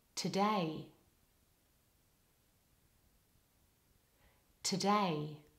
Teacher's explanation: in the word today, the first syllable has a weak vowel. So there's no lip rounding for the O, the letter O in the first syllable of today. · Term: schwa vowel